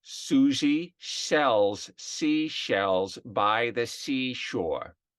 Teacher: the s tends to become an s h